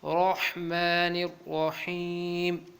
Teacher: را کے ساتھ حا کو حلق کے ساتھ ادا کرنا ہے